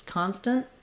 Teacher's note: I'm moving right from my T into my n this n is called a syllabic n · this final T sound is just stopping the N short